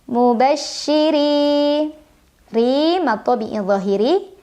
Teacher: secara tarqik karena ra berbaris tapi barisnya di bawah kasrah maka bacanya tipis tidak perlu mengangkat pangkal lidah